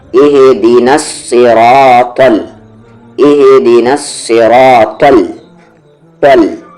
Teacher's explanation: نہیں ہوگی، ایسے نہیں کریں گے آپ، صراطل، طل، ایسے نہیں، یہ تا ہیوی ہے، یہ لام ہیوی نہیں ہے